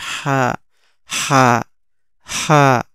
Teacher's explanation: তাইলে জিম উচ্চারণ হবে হচ্ছে জিবার মধ্যখান উপরের তালুর সাথে টাচ করে, আর এটা লম্বা করে চার আলিফ টেনে উচ্চারণ হবে জিম। হা, হা উচ্চারণ হবে হচ্ছে হলকের মধ্যখান থেকে এক আলিফ টেনে উচ্চারণ হবে হা, হা, হা।